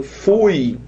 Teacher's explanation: O U é muito explosivo e o I muito tímidozinho, muito quietinho. Estoura, o O arrebenta tudo e o U ali quietinho na dele.